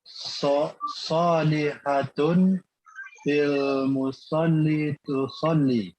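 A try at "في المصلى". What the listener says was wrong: Afwan fil musalla. Ingat ya di sini aina salihatun fil musalla, bukan fil musolli. Karena di situ ada huruf ya. Seperti huruf ya yang tidak ada titiknya. Makanya di situ tetap dibacanya fil musalla gitu ya.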